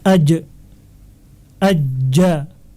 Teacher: sifatnya jahr jelas atau tidak ada aliran nafas karena tekanannya yang kuat